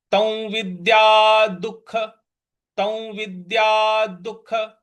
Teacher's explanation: दु के बाद जो विसर्ग है उसका उच्चारण हमें ख के उच्चारण के साथ करना है। तो बन जाएगा ये तौ विद्या दुख।